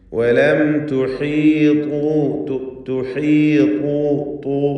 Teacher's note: ഏറ്റവും ഹെവിയാക്കി ഉച്ചരിക്കപ്പെടുന്ന, കടുപ്പത്തോടെ ഉച്ചരിക്കപ്പെടുന്ന അക്ഷരം കൂടിയാണ് ത്വാ.